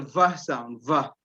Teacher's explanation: So you use the lower lip and you use the upper teeth, and then you don't use two lips